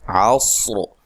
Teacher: صاد کو بھی ہلانا نہیں ہے اور صاد کو موٹا ادا کرنا ہے. را کو بھی وقف کی صورت میں موٹا ادا کرنا ہے.